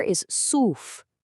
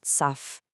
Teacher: That wow you see in the middle, right after a letter with a damma on it, creates that long oo sound. It's not saf, it's soof.